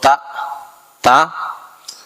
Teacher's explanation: tempat keluar hurufnya itu di punggung ujung lidah dan bertemu pangkal dua gigi seri